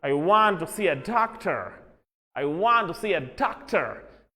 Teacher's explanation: American speakers हैं they prominently pronounce r sound. Suppose if I'm an American, I would read it like R, R, R, R.